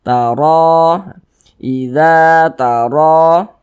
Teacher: Mad tabi'i panjangnya 2 harokat.